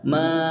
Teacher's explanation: Ma ini ada tanda harakat fathah bertemu dengan alif ini juga ada mad mad thi'i jadi maanya panjang dua harakat